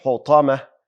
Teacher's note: حطمه ح هم واضحه، طا ډکه ویل کیږي.